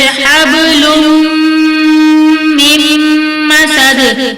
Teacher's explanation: دو پیش کی تنوین کے بعد میں مشدد ہے تو ادغام مع الغنہ ہوگا